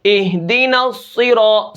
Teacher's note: صاد کو میں نے موٹا کیا